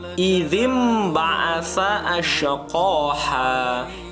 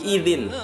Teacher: iqlab Hai jadi n-nya diganti menjadi m ya ingat tadi rumusnya n-nya bunyi n diganti menjadi Bunyi m ketika nun mati atau tanwin bertemu dengan huruf ba